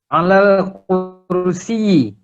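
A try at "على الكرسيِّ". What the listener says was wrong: Kursiyi. Tasdidkan ya-nya.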